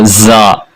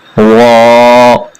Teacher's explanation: वा और जा, इन दोनों के दरमियान फर्क को ज़हन में रखना है। वो जा है, जोर के साथ दांतों को दबाकर पढ़ेंगे, और यह वा बिल्कुल नरमी के साथ।